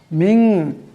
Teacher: মিন এখানে নুন সাকিনের পর শিন আসছে, এই শিন ইকফার হরফ, তাই নুন সাকিনকে একালে পরিমাণ ইকফার গুণনা করে পড়তে হবে।